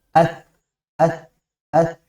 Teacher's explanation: Jadi suaranya ada tetap udara atau napas yang mengalir tapi lebih tertahan dibanding huruf sin. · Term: huruf sa